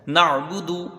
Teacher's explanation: اگر شروع حلق سے ادا کریں گے تو حمزہ ادا ہوگا، بیچ حلق سے اس کو ادا کرنا ہے تو پھر عین ادا ہوگا